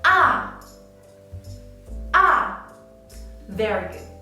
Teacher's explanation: Let's draw a slash and write it as 5-1. The pitch is from the top 5 to the bottom 1. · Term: fourth tone